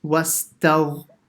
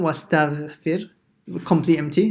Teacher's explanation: The ghain will be slightly full mouth, slightly heavy. Wastagh. Yeah, so it's not wastaghfir, completely empty, slightly full.